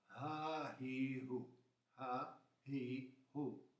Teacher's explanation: L'H di hotel, ma più aspirata